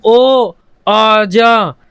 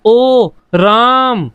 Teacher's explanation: किसी को आवाज लगाते हैं तो हम शब्द को थोड़ा सा खींच देते हैं, उसे बोलते हैं प्लुत स्वर।